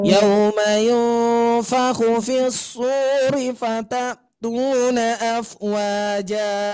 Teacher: Perhatikan nada akhir nada ujung ayatnya itu yang kemudian nadanya harus datar